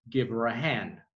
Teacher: the h sometimes disappears in connected speech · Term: h disappears